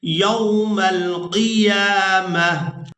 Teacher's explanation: وقف کی صورت میں اس ایک آنکھ والی تا کو ہا میں بدل دیں گے اور ساکن ادا کریں گے. میم کو اس ہا ساکن کے ساتھ ملائیں گے.